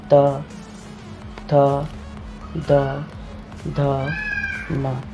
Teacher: तो जिनका उच्चारण ऊपर के दांतों पर जीभ लगाने से होता है उन्हें दंत्य कहते हैं